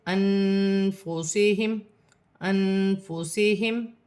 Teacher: یا نون ساکن میں اخفا ہوگا، فا حرف اخفا میں سے ہے